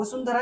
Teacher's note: कोणते त ठ द ढ न हे जर वर्ण आले तर त्या अनुस्वाराचा उच्चार त्या वर्गातील अनुनासिकेप्रमाणे म्हणजेच न सारखा होतो.